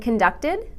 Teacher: That's right, a final syllable sound, id.